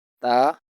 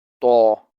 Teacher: However, in to, some part of the middle tongue also touches the gum line to make it a thicker sound. The only difference is that ta is a thin sound and to is a thick sound.